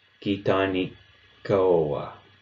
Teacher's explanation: That double K sounds very similar to a glottal stop. Effectively, you're holding the K sound just a little bit longer before you release it.